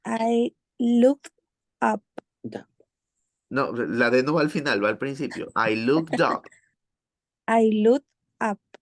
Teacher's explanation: the last consonant from the word combines together with the first vowel of the next one so it's not I looked up making a pause because that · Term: linked together